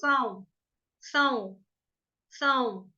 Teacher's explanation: स के ऊपर जब बिंदी अनुस्वार हो तो उसका उच्चारण साऊ। थोड़ा सा नाक में आएगा